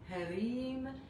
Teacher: le R roulé, un petit peu comme à l'italienne, ou à l'espagnol